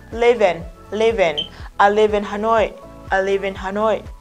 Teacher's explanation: Phụ âm kết thúc của từ đằng trước nối với nguyên âm bắt đầu của từ đứng sau. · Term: nối âm